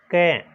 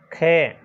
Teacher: ये तो दोनों अघोष ध्वनियाँ माने जाएंगी, यानी इसमें कंपन थोड़ा कम होता है